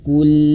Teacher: huruf lam dia sedikit dialirkan